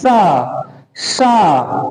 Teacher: ऊष्म व्यंजन। ऊष्म व्यंजन, इसमें संघर्ष करना पड़ रहा है, जीभ को, तालु को, पूरे मुंह को स्पर्श करना, संघर्ष करना पड़ रहा है। उसमें बहुत सारा गर्म वायु जो है बाहर की तरफ निकल रहा है।